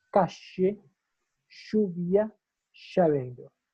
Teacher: El porteño te dice la L, te la pronuncia como una SH. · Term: yeísmo